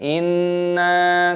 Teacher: Dengungkan nunnya, inna, dan panjangkan nunnya, ada tanda alifnya matopi'i. Dengungkan dulu baru dipanjangkan.